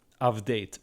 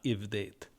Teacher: Now, most people are taught that ayin is a silent consonant, and in modern Hebrew, in the modern Israeli pronunciation, it is, but anybody who speaks Arabic knows that the ayin letter has a throaty guttural sound, and therefore it causes many vowels to change from one type to the A type. And that's why we get an A-type vowel here. · the vowel is modified under the influence of the guttural